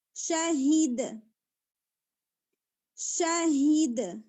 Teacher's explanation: اگر ہم اس کے اوپر سٹاپ کریں گے تو قلقلہ کر کے سٹاپ کریں گے